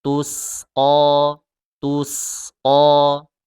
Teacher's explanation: Dan huruf so itu tebal, huruf sin tipis. Kalau bacanya tus-o, dia agak menebal sedikit.